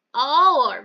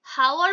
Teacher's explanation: হাওয়ার বলি না কিন্তু আওয়ার বলি। তাহলে এখানে এইচটা সাইলেন্ট আসছে